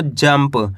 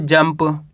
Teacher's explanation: यानी कि आधा माँ का उच्चारण निकलेगा जंप, क्योंकि जा के ऊपर अनुस्वार की मात्रा है, इसके बाद वाला अक्षर पा, तो यहाँ पे आधा माँ पढ़ेंगे जंप।